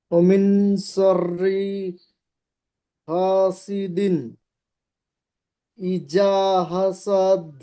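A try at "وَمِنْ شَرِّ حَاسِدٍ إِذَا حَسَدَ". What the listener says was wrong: কোথায় ভুল করেছে, অমিন, অমিন শাররি, রটা টান দিয়েছেন, হাসিদিন, ইজা, এটা জিম পড়েছেন, এটা জিম অক্ষর নয়, এটা জাল, হাসাদ, হাটান, হাসাদ, হাসাদ, সিনটা টান হয়েছে, হাটা টান দেননি, সিনটা টান হয়েছে, বুঝতে পেরেছেন?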